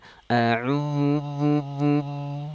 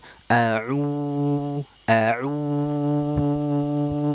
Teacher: kita membaca huruf-huruf Mad thaabii itu dia enggak ada perubahan suara enggak ada yang berdengung enggak ada yang sengau bunyinya enggak ada yang masuk ke hidung